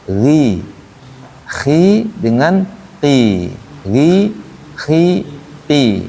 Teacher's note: ketika dia kasrah maka dia ketebalannya berkurang